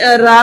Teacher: ਆਪਣੀ ਜਿਹੜੀ ਜੀਵ ਆ ਉਹ ਥੋੜੀ ਕੰਬਣ ਦੀ ਆਵਾਜ਼ ਕੱਢਦੀ ਆ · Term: ਕੰਬਵਾ ਵਿਅੰਜਨ